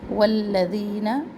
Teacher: واو ہونٹوں کی گلائی سے، واو کو فوراً لام تشدید سے ملائے. اور لام کا زبر لمبا نہ کرے.